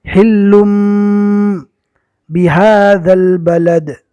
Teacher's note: تنوین کو میم سے بدل دیں گے، اقلاب ہوگا